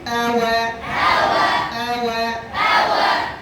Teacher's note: ওয়াও ঠোঁট গোলের অবস্থা দুই রকম করি আমরা, একটা হচ্ছে এইভাবে গোল, শুকনো অংশ কাছাকাছি না, বীজ অংশ কাছাকাছি হবে। দুই ঠোঁট গোল করে সামনের দিকে, মাঝখানে ফাঁকা। যদি মাঝখানে লাগিয়ে দেন তাহলে বাইরের দিকে ঝুঁকবে, বাইরের দিকে ঝুঁকানো যাবে না।